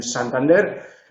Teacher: la punta de la lengua la colocamos entre los alveolos, que son las dos montañitas donde se enraizan los dientes de arriba, y silba.